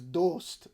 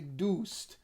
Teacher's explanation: the word for friend in Persian is dost, but Iranians, Tehran people in particular, will say doost